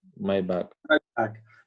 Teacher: It has to go down. It's a falling intonation.